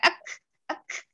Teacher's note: ada suara seperti nafas tertahan tapi dipantulkan